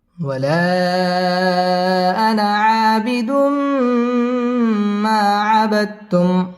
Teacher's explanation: আবিদুম তানবিনের বামে মিম আসছে মিম ইদগামে বা গুন্নার হরফ গুন্না সহ মিলিয়ে পড়তে হবে